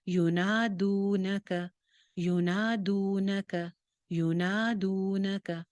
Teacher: نون ایک الف لمبا ہے، دال پیش واو دو، واو مدہ ہے، یہ بھی ایک الف لمبا ہو گیا. اور نہ اور ک یہ سنگل حرکت ہیں.